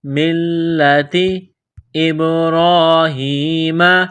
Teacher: مِّلَّتِ ابراہیم، حمزہ کو با کے ساتھ پلس کرنا ہے، با ساکن ہے تو یہاں پر قلقلہ کریں گے۔